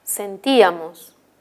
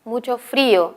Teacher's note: Estos hiatos son hiatos acentuales, porque en ambos casos la vocal I es la que tiene mayor intensidad.